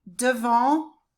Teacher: no T and no N. The N just makes the vowel nasal.